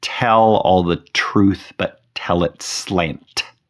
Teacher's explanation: The first line, tell all the truth, but tell its slant, is filled with T sounds, both beginning and ending with the letter T. and placing T sounds at the beginning of the second and third stress syllable